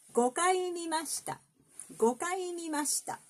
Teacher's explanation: We don't lower the mi